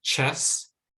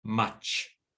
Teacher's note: But the voiceless version is ch. And so we see it in words like chess and at the end of the word, much.